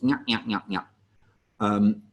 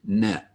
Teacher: It's the middle of your tongue in the center of the roof of your mouth, and then a little body English to it, nya. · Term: nya sound